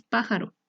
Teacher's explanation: Esta palabra está compuesta por tres sílabas, pa, ja, ro, y su sílaba tónica está en pa, porque es la que mayor sonido tiene